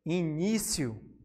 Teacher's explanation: A penúltima sílaba tônica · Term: paroxítona